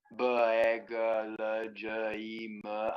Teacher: it is a it is a vocal vibration we have bag i'm vibrating the vocal chords